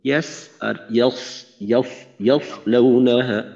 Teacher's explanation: সদর উচ্চারণ সহ মোটামুটি ভাবে যদি দাঁতের থেকে দাঁত আলাদা রাখা যায় তাহলে সিনের থেকে পার্থক্য হয়ে যায়, আর মূল পার্থক্যটা হবে একটু মোটা করার মাধ্যমে